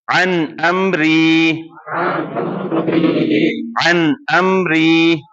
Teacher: ٹھیک ہے, تو اس کو آپ نے اسٹریچ نہیں کرنا ہے. عن امری کلیئر نون پڑھنا ہے, اظہار ہے, کلیئر نون پڑھنا ہے